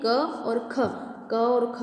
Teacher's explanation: और जिह्वामूलम, तो जिह्वामूलम के अंतर्गत हम देखते हैं क और ख, क और ख हमारा जिह्वामूलम है, यानी कि ये जिह्वा के मूल भाग के द्वारा बोले जाते हैं